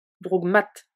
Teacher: Le K de drouk s'adoucit et se prononce G car il est suivi de la consonne sonore M.